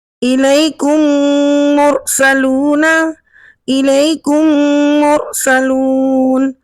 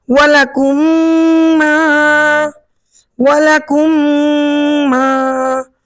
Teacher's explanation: یعنی وہ میم جس پر جزم کی علامت ہوتی ہے اور اس کے بعد پھر دوسری میم آ جائے، تو ہم نے کیا کرنا ہے، دونوں میم کو ایک کر کر ملا کر غنہ کے ساتھ پڑھنا ہے، اور اس قاعدے کا نام ادغام شفوی ہے۔